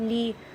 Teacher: اب یہ لی پڑھیں گے نا کسرہ کے ساتھ، لی، تو ہم نے لے نہیں کہنا